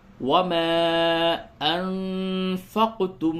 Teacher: اس کے بعد حمزہ اگر دوسرے کلمے میں ہو تو اس مد کو مد منفصل کہتے ہیں، اور مد منفصل کو تھوڑا کم ہی کھینچا جاتا ہے